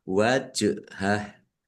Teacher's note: jim sukun bacaan qalqalah dibaca memantul ditampakkan pantulannya wajhah nah haknya nya dibaca sukun karena wakaf dan pendek wakafnya karena tidak ada tanda panjangnya.